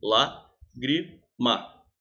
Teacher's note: A sílaba mais forte é lá. É a antepenúltima.